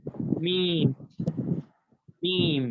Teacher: میم ہونٹوں کے خشک حصے سے ادا ہوتا ہے